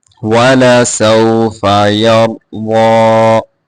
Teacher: را ضاد دونوں کو موٹا کر کے پڑھیں گے اور ضاد کو کھینچ کے پڑھیں گے